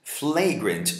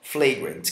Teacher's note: esse A é um schwa, é bem fraquinho